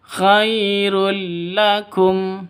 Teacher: Tanwin bertemu dengan lam. Cara bacanya masuk ke lam tanpa dengung. Karena idgham bila gunnah.